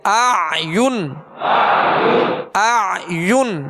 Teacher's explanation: زبر کی ادائیگی میں آواز اور منہ کھولیں گے، اور جب پیش پڑھیں گے یا کا تو ہونٹ گول کریں گے